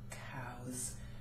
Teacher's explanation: You might spell cow with a W at the end, but the sound it ends with is a vowel. Therefore, the S turns into a Z.